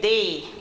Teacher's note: when it comes on to our TH words, we do not put, our tongue between our teeth